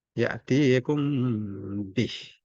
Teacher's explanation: Mim bertemu mim dan mim bertemu ba. Dia baca dengan dengung. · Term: ikhfa syafai